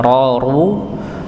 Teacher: Yang diangkat bukan hanya sekedar ujung dari lidah, tapi pangkal lidahnya juga diangkat untuk menebalkan huruf ra atau huruf-huruf yang yang tebal lainnya. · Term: dibaca tebal